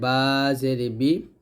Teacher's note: বা দুই ঠোঁট মিল করে